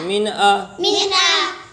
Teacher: نون ساکن کے بعد حروف حلقی میں سے حمزہ ہے، اس لیے نون کو ظاہر کر کے پڑھیں گے۔